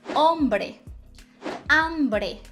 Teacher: mas ele não tem som então eu vou dizer ombré hombre não tem som o som vai sair o som da vogal que vem em seguida